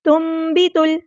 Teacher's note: اصلی کریں گے، مما تنبت الارض، یہاں پہ نون ساکن کے بعد با آیا، اقلاب ہو رہا ہے، تو میم کی آواز کو یہاں پہ آپ نے پڑھنا ہے